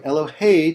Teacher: We call this type of accent milra, when the final syllable of the word is accented.